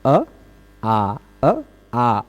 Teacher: और अ आ दोनों बोल लेते हैं, बोलने में उच्चारण स्थान नहीं बदलता पर प्रयत्न बदल जाता है, प्रयत्न बदल जाता है ना। अ संवृत है, आ विवृत हो गया · अ बोलने में कम मुंह खुलता है, आ बोलने में थोड़ा सा ज्यादा खुल जाता है ना। यद्यपि इन दोनों का उच्चारण स्थान एक है, कंठ, कंठ से ही सीधे इसका भी उच्चारण होता अ आ।